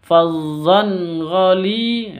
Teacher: tanwin bertemu dengan ghain, bacaan izhar halki, izhar halki bacanya jelas. Fazzan ghali, tanwin dan ghainnya jelas.